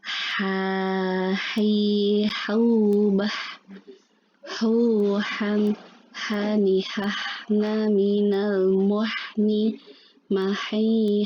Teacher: Mendekati sempurna adalah seperti orang yang kepedesan ya, kalau kita ya mungkin habis ngerujak atau apa, makan sambal, nah kayak gitu tuh ya, ada udara yang keluar ya. Sifat hurufnya salah satunya hams ya, udara yang keluar.